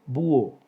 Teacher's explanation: Búho, 2 sílabas. Hay un hiato entre la vocal cerrada tónica U y la vocal abierta O. Por lo tanto, tilde sobre la vocal cerrada tónica U.